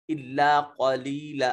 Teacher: क़ाफ को मोटा और या साकिन माक़बल मकसूर या मद्दा।